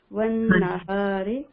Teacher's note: تشدید ہے نون کے اوپر غنہ کریں گے. والنہار ہا کو سینے کی طرف سے نکالیں گے.